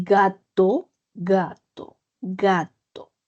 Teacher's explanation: Sienta cómo su lengua impacta en el fondo y no es la punta, no es el dorso, sino es el posdorso de la lengua. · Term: Zona velar